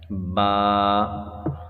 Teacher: دیکھیں یہ با ہے، عربی میں جب اس کو پڑھا جاتا ہے تو با اس طرح پڑھا جاتا ہے، اور آگے دیکھیں گے تو یہ چھوٹا سا لکھا ہوا ہے با الف زبر با، یعنی ایک الف کی مقدار اس کو کھینچ کر پڑھا جاتا ہے